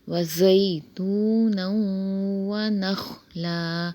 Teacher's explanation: خا جو ہے موٹے حروف میں سے ہے، اسے موٹا پڑھیں گے، اور لام کے اوپر جو ہے وہ دو زبر ہیں تو وہ ایک الف سے بدل جائیں گے اور وقف بنے گا وقف بالابدال۔